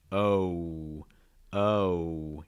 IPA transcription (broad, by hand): oʊ